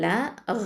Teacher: இப்போது ப ஃபத்ஹா ப அப்படின்னு சொல்லும்போது ப வந்து ஷஃபத்தான் உதல் எழுத்து, லாம் ஃபத்ஹா லாம் வந்து ஹாஃபத்துல் லிசான், அதாவது நாவின் ஓரப்பகுதி எழுத்து